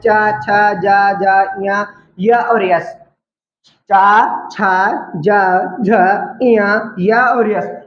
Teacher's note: तालव्य मतलब जिनमें तुम्हारी जीभ तुम्हारे तलवे को स्पर्श करे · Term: तालव्य व्यंजन